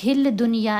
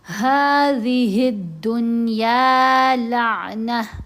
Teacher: دال بھی حروف شمسی میں سے ہے اسی لیے الف اور لام نہیں پڑھنے، ہل دنیا نہیں پڑھیں گے، هَذِهِ الدُّنْيَا لَعْنَةً۔